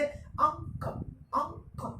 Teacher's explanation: जैसे मैंने कहा अंक, अब देखिए अंक बोल रहा हूं मैं और नाक बंद कर लूं पूरी तरह से, तो अ और क के बीच की ध्वनि का उच्चारण नहीं होगा क्योंकि ध्वनि पूरी तरह से नाक में।